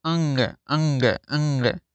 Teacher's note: हिंदी वर्णमाला का पांचवा अक्षर नाक से बोला जाता है। अंग, जैसे अंग जो बोलेंगे तो आपकी कहीं ना कहीं नाक से आवाज निकलती है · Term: नासिका